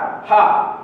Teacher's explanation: सघोष और महाप्राण दोनों होता है